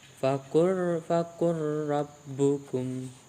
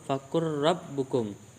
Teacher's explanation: maka lam bertemu dengan ra, jadi membacanya harus dileburkan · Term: idgham mutaqarriban